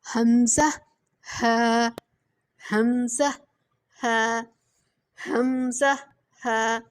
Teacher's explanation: حلق کے نیچے والے جو سینے والی سائڈ ہے حلق کی، وہاں سے ادا ہوتا ہے